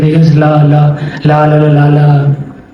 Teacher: हमारी जो जीभ होती है जीभ के दोनों तरफ जो साइड होती है बगल इनसे हवा निकलती है · पाश्व का मतलब होता है बगल। बगल यानी साइड से हवा निकलती है। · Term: पाश्व वर्ड